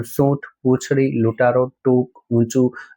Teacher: તો ઊંટ ઉપર અનુસ્વાર તો મૂકવો જ પડે. સાનુનાસિક તો છે પણ કોમળ છે, અનુસ્વાર બહુ સંભળાતો નથી.